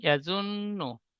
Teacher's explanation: নুনের উপরে তাজদিদ আছে, নুন তাজদিদ গুন্না করা ওয়াজিব, নাকে তুলে একালি পরিমাণ গুন্না করে পড়তে হয়। নুনের উপরে পেশ এসেছে, পেশটি হারাকাত, হারাকাত তাড়াতাড়ি পড়তে হয়, টান দেওয়া নিষেধ।